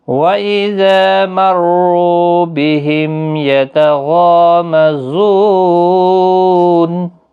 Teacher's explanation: میم ساکن کے بعد یا ہے اظہار شفوی ہوگا